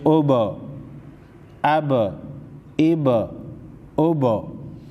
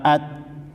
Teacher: حروف کو ہلا کر پڑھیں گے جیسے حمزہ با زبر اب حروف قلقلہ میں سے با ہے با کو ہلا کر پڑھیں گے